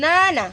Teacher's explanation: ramdam mo sa ilong din lumalabas 'yung hangin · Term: pailong